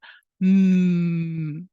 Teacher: out of your mouth and say a long M sound M with your fingers on the bridge of your nose and you should feel a vibration in your nose · close your lips so that no air can flow out of your mouth and say a long M sound M with your fingers on the bridge of your nose and